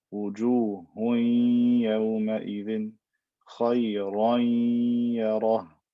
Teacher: And I stretch this for two haraka, right? I give the ghunna a length of two haraka